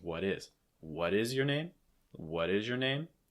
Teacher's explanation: you can also have a more full form with a fast D sound, linking what is.